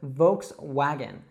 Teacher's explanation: Now, in the United States, we would call this a Volkswagen. Now, it's really important that you pronounce that W not as a V sound, but as a W sound